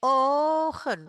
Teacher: huruf o diucapkan panjang, sedangkan ken diucapkan pendek